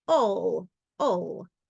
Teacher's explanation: if it's not accented, if it's unstressed, and it's making the schwa sound, instead of all, it'll sound like ol